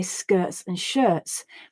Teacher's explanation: that letter t might not be clearly pronounced as a t sound at speed i'm much more likely to say skirts and shirts replacing the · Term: stop in my throat